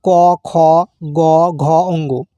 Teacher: সেই সমস্ত বর্ণকে বোঝানো হয় যা কন্ঠ বা জীভামূল থেকে উচ্চারিত হয়। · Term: কন্ঠ বর্ণ